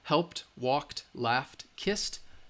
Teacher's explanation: So we know that these verbs that I just show you, helped, walked, laughed, kissed, they are all, the final sound is voiceless, so the ED has that T sound